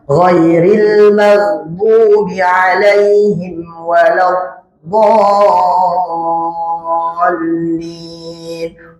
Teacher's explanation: Dapat lam tasydid kayak L double dia, ya.